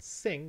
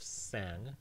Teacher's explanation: in sing you need to change the [i] into the [a] of sang to form the past tense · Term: ablaut